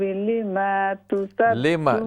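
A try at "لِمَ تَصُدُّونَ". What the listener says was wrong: لما زبر کو لمبا نہ کریں، لما تصدون لما میم زبر ما جی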